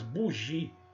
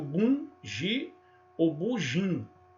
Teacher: as primeiras duas sílabas são orais, bugi. e as pessoas pronunciam bum, gi ou bujim, ou fazendo as duas, bum, ginganga.